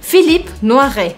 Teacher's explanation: o E no final das palavras, quando ele não tem acentuação, ele também não é pronunciado e a gente termina o som na consoante anterior.